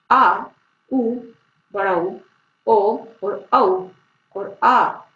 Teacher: ये स्वर जीव के पीछे के भाग से बोले जाते हैं, इसलिए इन्हें पश्च स्वर कहा जाता है